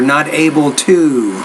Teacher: When you pronounce that T, you have to pronounce it with more air and then make the vowel sound longer.